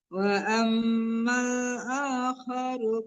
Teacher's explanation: ma-nya tidak panjang ya karena di depannya ada lam mati